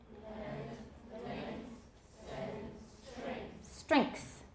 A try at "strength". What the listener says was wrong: Strength. If you put the K in there, your pronunciation will be right on the nose.